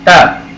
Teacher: दंत्य वर्ण, दांत और जीभ दोनों को मिला के जो बोले जाते हैं। त, जहाँ दांतों के बीच में जीभ आ जानी चाहिए हमारी।